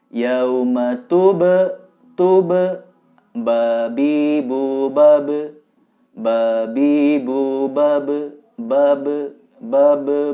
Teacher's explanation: ini Qalqalah huruf ba harus memantul